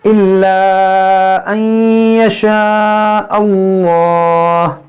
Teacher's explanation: इसमें जलालत से पहले ज़बर है, इसको मोटा पढ़ेंगे